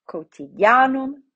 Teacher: We look to the penultimate and we see that the penultimate, the A, is long. So it gets the accent.